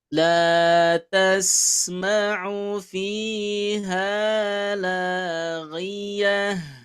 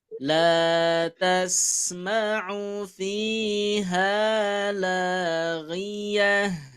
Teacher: Maka pembacaannya itu disukunkan. Kemudian bunyinya menjadi bunyi H besar.